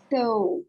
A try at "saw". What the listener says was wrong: The pronunciation is saw. Saw. Saw. Yes. Saw. Not so. Saw. More open.